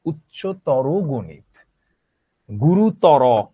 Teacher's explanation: এই দুইটা প্রত্যয় যখন থাকবে বিশেষণ পদের শেষে, তখন আমরা ও এর মতো উচ্চারণ করব। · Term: তর এবং তম